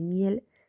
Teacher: el caso de miel que nos da una vocal anterior semiabierta